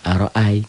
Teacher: Tidak jadi matobi'i, tidak jadi panjang. Kayak a dan i jadi diptong ai.